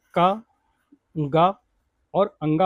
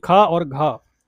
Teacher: क ग और अंगा हो गया आपका अल्पप्राण। और दो और चार यानी ख और घ हो गया महाप्राण